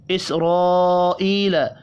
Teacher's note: اسرائیل، را زبر کی وجہ سے پر پڑھیں گے، الف کے اوپر بڑی مد ہے، 5 الف کے برابر کھینچ کر پڑھنا ہے۔ ای، یا مدہ ہے، 1 الف کے برابر کھینچ کر پڑھیں گے۔